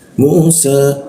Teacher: Lidahnya dinaikkan ya seperti itu. Musa huruf sa itu giginya diadu ya. Sehingga rongga udara terbuka dan ada hembusan udara yang cukup kencang.